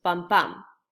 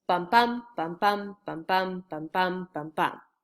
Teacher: if you remember an I am is a foot and it's a unstressed followed by a stressed syllable it goes bum bum so I Amic pentameter would be five